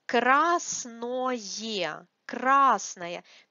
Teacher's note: Красное, красное. Because this ое is not stressed, we have stress on а here. We pronounce it like ае.